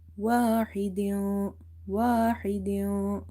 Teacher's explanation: ha is from the middle of the throat, same like ain. They both are pronounced from the middle part of the throat. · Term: halkiya letters